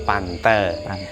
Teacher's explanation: Karena diftong AI berubah menjadi E, A plus I menjadi E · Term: panggarba